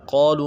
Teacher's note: آمنوا قالوا میں قاف کو موٹا کرنا ہے کیونکہ الف مدہ ہے، قاف کو بھی موٹا کرنا ہے، الف مدہ کو ایک الف مدار میں کھینچنا ہے، اور لو میں واو مدہ ہے، وہ مدہ عارضی ہے، اس کو دو الف کی مدار میں کھینچنا ہے۔